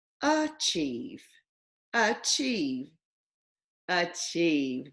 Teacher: I wonder if that E, that A at the beginning of the word is a schwa